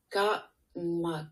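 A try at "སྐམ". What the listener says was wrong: Gam. Mais ça va, cam. Mais petit à petit, ça va devenir gam. Parce que, de nouveau, le K, une fois qu'il est avec une lettre, au-dessus de lui, en général, il devient ga.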